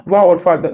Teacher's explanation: दंतोर में ऊपर के दांतो और नीचे के ओष प्रयुक्त होते हैं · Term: दंतोष्ठ